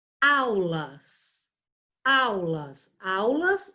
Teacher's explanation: O U também não vai ter um som forte e ele vai ficar junto da vogal A, gerando um ditongo